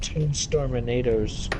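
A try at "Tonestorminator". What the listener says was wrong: Let's just call him it's Tone, by the way. Let's just call him Tone. You said Tune. Tone.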